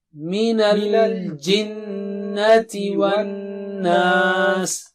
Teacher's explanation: جنہ یہاں بھی غنہ ہے، والناس یہاں بھی غنہ ہے، اور ناس یہاں مد ہے